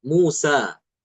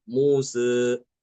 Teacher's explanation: Muz dia tidak sempurna fathahnya dia. Dia cenderung sedikit apa mengarah ke kasrah tapi sedikit ya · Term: imalah sugra